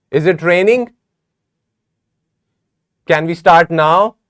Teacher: here are some examples of rising intonations where you have to raise the pitch of your voice